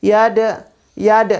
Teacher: Jadi berada di pertengahan kalimat. Jadi bunyi kolkolanya itu jangan dibesarkan, kecil aja. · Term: kolkola sugro